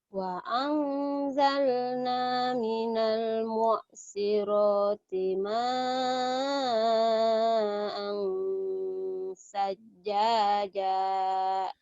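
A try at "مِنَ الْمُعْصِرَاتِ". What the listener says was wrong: Bagus, tinggal ainnya yang belum keluar ya. Wa anzalna minal mu'sirati ma'an sajjaja. Mu'. Minal mu'. Jangan mu'a. Minal mu'. Mu'. Mu'. Mu'. Jangan mu'a.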